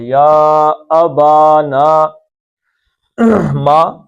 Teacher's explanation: زبر کے بعد الف آ گیا تو مد اصلی دو حرکتیں